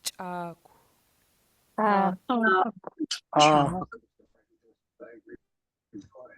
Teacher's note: this first CH will be pinched, and then the rounded KW will be smooth and mellow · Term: pinched CH